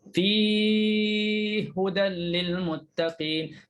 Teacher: Tapi kalau fi ada mat. Sebelum idgham ada mat. Jadi bolehlah nak panjangkan sampai 6 pun.